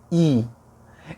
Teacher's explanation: Não é um pulo instantâneo, é aos poucos, porque o I, como eu falei, ele é palatal